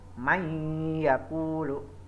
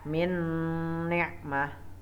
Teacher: nun sukun atau tanwin itu dimasukkan menjadi satu dengan huruf sesudahnya atau ditasdidkannya dan dengan mendengung. Misalkan may yaqulu, ada nun mati ketemu ya, jadi dibacanya berdengung. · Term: idgham bihunah